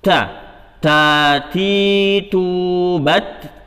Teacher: Jadi setiap pengucapan huruf ta kita keluarkan hawa sedikit. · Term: al-hams